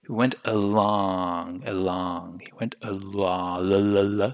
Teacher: So you hold on to that L sound a bit more longer.